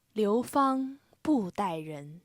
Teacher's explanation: Bu is pronounced ba. It's the entering tone that ends with unaspirated T.